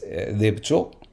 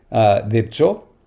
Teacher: And it's a low vowel word, so, e, o, and then it's got the b and the cha. In the middle is some kind of reduced vowel that sometimes doesn't even surface, to be honest, but sometimes surfaces as schwa.